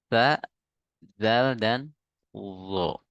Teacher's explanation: Yang keluar dari ujung gigi seri atas, ujung lidah menyentuh ujung gigi seri atas.